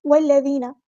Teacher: ہم نے واو کو لام کے ساتھ ملا دینا ہے، حمزۃ الوصل ہمارا ڈراپ ہو جائے گا ، زال کو نرمی سے ادا کرنا ہے، باریک ادا کرنا